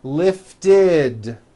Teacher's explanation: if a word ends in a t or a D sound we add the ending ID which is a vowel I followed by a d which is voiced